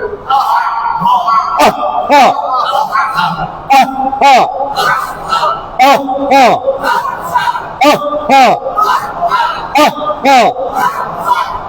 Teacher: এটা হলো 1 নম্বর মাখরাজ, হলকের শুরু হতে হামজা হা